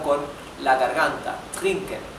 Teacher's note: van practicando para que salga con la garganta, trinken, y no dental como la R de español